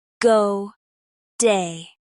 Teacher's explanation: The vowel in day moves from a to a slight e. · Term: vowel gliding